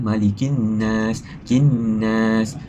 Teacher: huruf lam tersebut tidak diperdengarkan. Lam tidak dibaca dan kita dan dimasukkan diidramkan ke nun. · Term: alif lam syamsiah